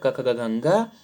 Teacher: क ख ग घ ङ, विसर्ग और ह कंठ से उच्चारित होंगे